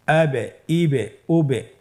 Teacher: এই যে আমরা হরফের শেষের দিকে একটা সাউন্ড করছি, এটা একটা প্রতিধ্বনি হচ্ছে, একটা ডাবল সাউন্ড হচ্ছে, এটাই কলকলা। উচ্চারণের সময় একটু ধাক্কা দিয়ে উচ্চারণ করলেই কলকলা হয়ে যাবে ইনশাআল্লাহ।